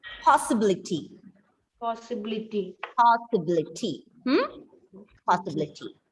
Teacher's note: you have to stress on the third last